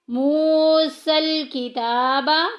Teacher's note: منہ میں واو ساکن پیچھے پیش واو مدہ کا قاعدہ جاری ہو رہا ہے، ایک الف کے برابر لمبا کریں گے